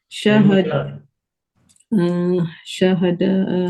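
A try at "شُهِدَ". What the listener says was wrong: Syahida bukan syahada.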